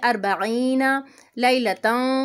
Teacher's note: تنوین کے بعد تا ہے، یہاں پہ بھی اخفا کرنا ہے